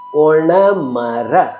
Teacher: ಒಣ ಎಂದು ಹೇಳಿದಾಗ ನಾಲಿಗೆಯನ್ನ ಮಡಿಸಬೇಕು